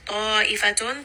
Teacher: ta is going to be a 4-count mad